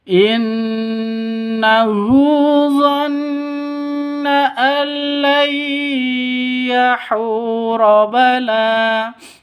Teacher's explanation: Sini ada nun mati bertemu dengan ya. Cara bacanya masuk ke ya disertai dengung. · Cara bacanya masuk ke lam tanpa dengung. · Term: idgham bighunah, idgham bila gunnah